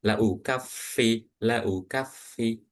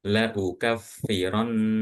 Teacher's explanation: kalau yang di nun tasdid yang di nun itu bacanya seakan-akan kamu tahan enggak langsung selesai nunnya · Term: ghunah